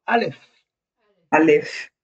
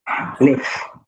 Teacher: la prononciation, en fait, c'est guttural, ça veut dire que c'est un souffle, mais en bloc